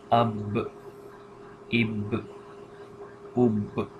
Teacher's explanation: we are making this bouncing sound in the end on the B because this is also a bouncing letter